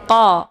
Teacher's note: Ini qa-nya posisinya tebal ya, karena posisinya yaitu di pangkal lidah